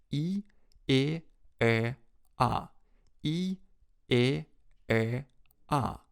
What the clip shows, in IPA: i - e - ɛ - a